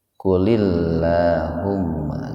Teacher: Lamnya itu dibaca tipis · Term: tarkik